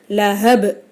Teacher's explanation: அப்போ நம்ம சுக்குன் வச்சு நிறுத்தணும். சுக்குன் பெற்ற பா கல்கலாவுடைய எழுத்து. அப்போ லஹப் அப்படின்னு நம்ம அசைச்சி நிறுத்தணும்.